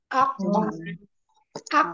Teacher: Kalau sudah ak, nah, pantulannya tinggal bunyi ko, tapi tanpa merubah bentuk mulut